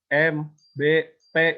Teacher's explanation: Labial itu kan labio itu bibir. Jadi kalau bilabial dua bibir bertemu.